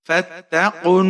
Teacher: فتح، اوف کے اوپر پیش ہے، آگے ہمارے پاس نون پر تشدید ہے، اوف کو نون کے ساتھ ملائیں گے، یہ بیچ میں آپ کے پاس جتنے بھی حرف آ رہے ہیں ان کو آپ نے نہیں پڑھنا، اوف کو نون کے ساتھ ملائیں گے تشدید کی وجہ سے، اور غنہ کریں گے یہاں پر۔ فتقن، نون کے اوپر زبر ہے، ایک الف کے برابر کھینچ کر پڑھیں گے الف مدہ کی وجہ سے۔